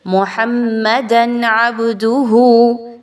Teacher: 2 زبر کی تنوین کے بعد حرف عین ہے، اظہار کیجئے، غنہ بالکل بھی نہیں کرنا ، محمدن عبدہ ایسا کرنا درست نہیں ہوگا، بلکہ محمدن عبدہ،